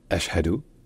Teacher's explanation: coup de glotte au début, puis un ch et un h qui se suivent